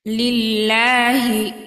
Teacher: আল্লাহ শব্দের ডানে জের আমরা আল্লাহ শব্দটাকে বারিক বা পাতলা করে পড়ব